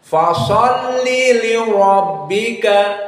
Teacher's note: Li rabbika, maka ra dalam keadaan mufakhamah dan kaf muraqqaqah dan ba muraqqaqah.